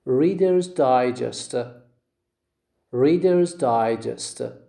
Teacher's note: The stress is on the first syllable of the word digest.